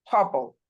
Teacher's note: আর এর পরে কোনো ভাওয়েল নেই, যার কারণে এখানে আর এর উচ্চারণটা হচ্ছে সাইলেন্ট